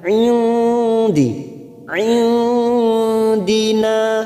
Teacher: nun sukun bertemu Dal namanya Ikfa Hakiki kita samarkan bunyi nun sukun tiga harakat Indi Indina n fathah diikuti Alif du harakat Madi Na Wa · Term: ikhfa hakiki